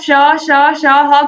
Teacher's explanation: वर्णों के उच्चारण में हवा मुख से रगड़ खाती हुई धीरे धीरे बाहर निकलती है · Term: ऊष्म संघर्षी व्यंजन